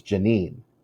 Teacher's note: is the first syllable stressed it would be janin because the the long vowel sound gets kind of taken away when uh when it's unstressed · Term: second syllable is stressed